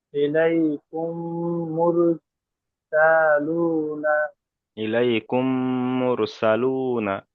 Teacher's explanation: মিম সাকিনের পরে মিম এসছে, এটা মিম সাকিনের সাথে মিলে পড়তে হবে, একালি পরিমাণ গুণা হবে। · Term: ইদগামে সাফাবি